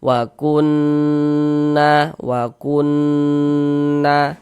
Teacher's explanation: Karena dia gunnah maka kita gunnahkan. Jadi di bagian kunnya itu suaranya itu kita tahan, kita panjangkan sejenak sepanjang 2 harokat.